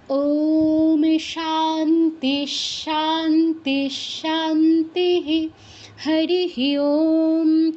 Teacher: বিসর্গের পর তালব্যস আছে সেজন্য আমাদের বিসর্গস্থলে তালব্যস হসন্তর মত উচ্চারণ হচ্ছে